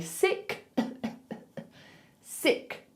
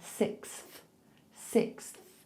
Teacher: So a lot of people say sixth. So they don't do that x sound. They just do a k.